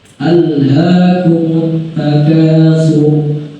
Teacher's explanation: roh ini dibaca tebal dikarenakan karena sebelum huruf roh itu adalah huruf toma. Nah, jadi sebelum huruf roh, seandainya huruf roh sebelumnya adalah huruf toma atau huruf fathah, nah itu akan dibaca tebal.